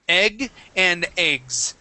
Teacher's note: and eggs with the with a z at the end uh that s is going to be a voiced s sound